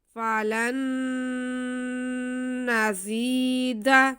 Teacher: فذوقوا فلن نزید، جی فا پہ بھی زبر ہے، آگے لام پہ زبر ہے، لیکن ساتھ میں نون ساکن ہے، تو نون ساکن کے بعد آگے پھر نون آ رہا ہے، تو یہاں پہ ہمارے پاس ادغام کا قاعدہ ہو رہا ہے، ہم نون کو نون میں ملا کے پڑھیں گے اور ایک الف کے برابر غنہ کرتے ہوئے پڑھیں گے